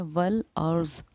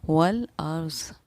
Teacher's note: رائے ساکینہ سے پہلے کیونکہ زبر ہے تو اسی لیے ہم رائے ساکینہ کو پر پڑھیں گے